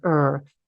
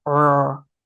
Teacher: the Resh the r sound ER used to come from the throat